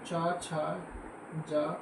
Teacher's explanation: मध्य भाग हमारे तालु को स्पर्श करता है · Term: तालुप्य व्यंजन